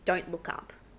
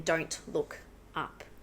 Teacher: So it's taking away that unnecessary pause, bringing those words together. With don't, we drop the T